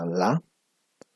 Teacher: Laterales porque si ustedes en este momento, por ejemplo, pronuncian la, eh, el aire escapa por los costados de la lengua, ¿no? La lengua hace contacto con el alvéolo, ¿no? Y por los costados escapa el aire. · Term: sonidos laterales